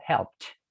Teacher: la p pierde fuerza para dar el protagonismo al t de la ed